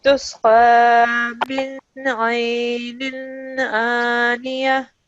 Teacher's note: noon with the sukoon, then you have to make a full nasal sound.